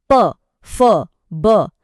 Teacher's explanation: और आखिरकार हमारा ये सफर मुंह के सबसे बाहरी हिस्से यानी होठों पर खत्म होता है। प वर्ग की सारी आवाजें दोनों होठों को मिलाने से ही बनती हैं।